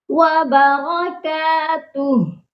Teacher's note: جب ہا پر آ کر رکتے ہیں، ہا کو ساکن کرتے ہیں تو ہا کے اوپر کی جو حرکت ہوتی ہے اس کو نہیں پڑھتے